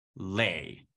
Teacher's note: a syllable that starts with a lateral and has I as its rhyme